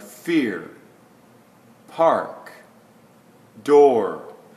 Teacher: the more vowel-like R for a word like fear, park, door, when it's after a vowel. So this is the one before the vowel, this is the one after the vowel.